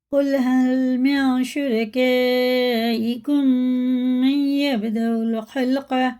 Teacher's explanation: میم ساکن کے بعد میم ہے تو اسے غنہ کر کے پڑھنا ہے